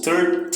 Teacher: É mais espaçado, tá vendo? O final é que tem mais força